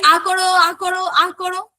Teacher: কারণ এই উচ্চারণের দীর্ঘতার জন্য আ উচ্চারণকালে আমাদের মুখগহবর সবথেকে বেশি প্রসারিত হচ্ছে